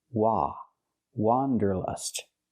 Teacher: The correct pronunciation of this word has the sound ah, like hot and stop. It's an open sound. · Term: open ah sound